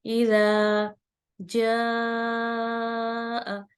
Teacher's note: اذا جاء یعنی اس کو 4 یا 5 حرکت لمبا کریں گے. کیوں؟ کیونکہ یہ مد متصل آ رہی ہے